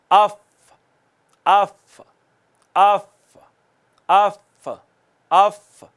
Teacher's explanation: सनाया उलिया का किनारा, ऊपर वाले 2 दांत जो हैं जब नीचे वाले होंठ के दरमियान में आके टच होते हैं तो फ़ा अदा होती है।